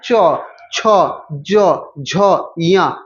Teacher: तालु से बोलते हैं हम लोग च वर्ग वाले